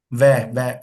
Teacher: व ऊपर वाला दांत नीचे वाले होठ पे टच होगा तो दंतोष्ठ होता है